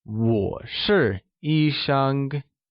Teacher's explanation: where 医生 is pronounced using the first tone